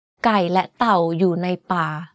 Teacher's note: in this sentence, the word la is spoken in a high tone and nai has a middle tone. The rest of the words in the sentence are spoken in a low tone. To perfect this tone, make sure you keep your pitch as low as possible.